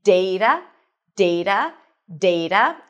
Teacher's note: I am using the general American pronunciation, so you'll notice that my T sounds a little bit like a D